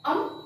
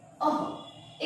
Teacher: ये अनुस्वार का उच्चारण म के रूप में है और विसर्ग का उच्चारण, दो बिंदुओं का उच्चारण ह के रूप में होता है